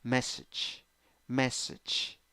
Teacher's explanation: This one, 6 letters, 5 sounds, 2 syllables. The first syllable is the stressed syllable